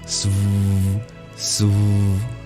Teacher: For example, the V is kind of halfway between a V and a W. We purse our lips like a W, not merely bring it to our teeth like a V, but we vibrate them so it kind of sounds like a V